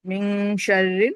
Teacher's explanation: نون ساکین کے بعد شین آ رہا ہے تو یہاں پہ اخفا ہوتا ہے. من شر، ناک میں آواز جو ہے چھپی رہے گی